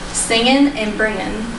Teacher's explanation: in Ebonics, they usually omit the final consonant